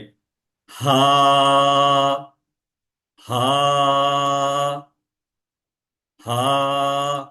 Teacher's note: হলক মানে কণ্ঠনালী, যেখান থেকে আমাদের কণ্ঠের সাউন্ড বের হয়, সেই কণ্ঠের শুরু থেকে এটা উচ্চারণটা হবে। এবং ঠিক গলার ভিতর থেকে হালকা করে একটা হা মানে এটা আপনি উচ্চারণটা করবেন।